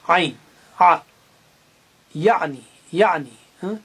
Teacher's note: عین جو ہے حلق کے درمیانی حصے سے ادا ہوتا ہے، عین، آ، یعنی، یعنی۔